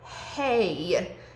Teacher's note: There's more than one sound if you sound them out. In the word hey, you hear one beginning with the E and transitioning to the Y sound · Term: diphthong